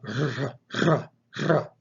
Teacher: Rho is the Greek R sound, but it's a trilled R. So it's a r sound.